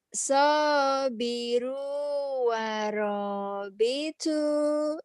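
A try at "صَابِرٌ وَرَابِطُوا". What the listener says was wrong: Bitu, bitu. Jangan bicu, bitu. Jangan dipecahin. Bitu.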